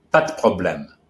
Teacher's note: The P is not exploded in French like it is in English. It's a strong, straight consonant.